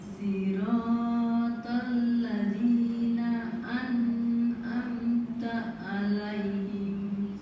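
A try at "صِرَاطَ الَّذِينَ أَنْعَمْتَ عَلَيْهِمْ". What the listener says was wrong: Sirat, jangan terlalu panjang ibu, sayun aja. Sirat.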